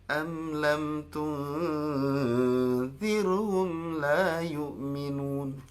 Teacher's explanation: nada setengah di hampir ujung itu coba diturunkan